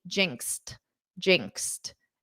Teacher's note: And then in the ed form, you pronounce it as a t